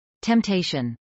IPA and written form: tɛmtˈeɪʃən (temptation)